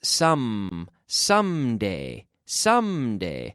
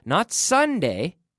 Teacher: with the M, you have to close your lips